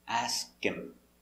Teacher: when you have that H for him and her, the H is silent.